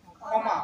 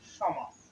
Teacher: মূর্ধনা স এর উচ্চারণটা প্রাধান্য পাবে